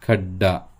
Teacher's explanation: पहिल्या ड चा उच्चार कमी आणि दुसरा ड हा पूर्ण उच्चाराने केला जातो